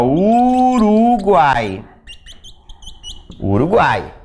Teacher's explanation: aqui é a minha vogal que vem no meio certo e essa vogal está ladeada por duas semivogais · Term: tritongo